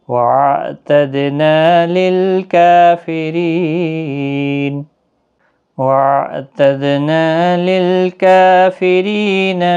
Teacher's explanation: را زیر کی وجہ سے باریک بھی پڑھا جائے گا